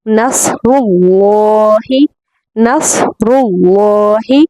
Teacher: साद, रॉ और अल्लाह का जो लाम है, इन तीनों को पुर पढ़ने की कोशिश करें।